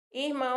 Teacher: Irmão, a gente sabe que a sílaba tônica está no mão.